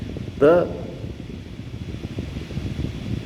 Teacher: Understand? The is hard touch on the teeth with less air. Tha, it is called Mahaprana.